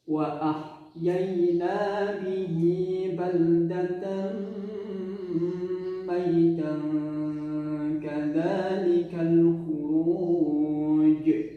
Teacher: Yang dipantulkan ya agak sedikit lebih tertekan ya, lebih nyata qalqalahnya. Karena dia posisi huruf qalqalahnya mati di akhir wakaf. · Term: qalqalah kubra